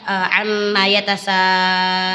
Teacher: Apabila ada mat tabi'i bertemu dengan hamzah dalam satu kalimat, maka cara membacanya dipanjangkan 6 harokat. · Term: Mat wajib mutasil